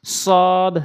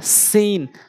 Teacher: সদ, সিন, সদ, সিন, একই জায়গা থেকে উচ্চারণ, সদের ক্ষেত্রে মুখটা গোল হবে, সিনটা একটু মুখটা ওসার হবে